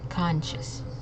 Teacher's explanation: the C it's making a sh sound okay so it's conscious and also we're uh emphasizing on that first syllable · notice how the S and the C it's making a sh sound